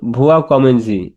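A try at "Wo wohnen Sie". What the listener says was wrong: ভুয়া হ্যাঁ, নিশ্চিত এখানে যে ভো হেয়া হ উচ্চারণ করতে হবে, ভো হেয়া। ভো হেয়া খামেনজি।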